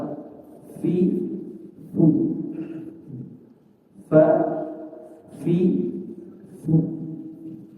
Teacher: ada huruf yang bersentuhan antara 2 gigi seri, 2 gigi kelinci bersentuhan dengan perut bibir bawah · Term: huruf fa